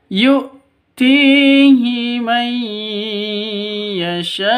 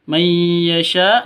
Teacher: nun mati bertemu dengan ya. Cara bacanya masuk ke ya disertai dengung 2 ketukan karena bacaan idgham bi gunnah. Idgham masuk bi gunnah dengan dengung.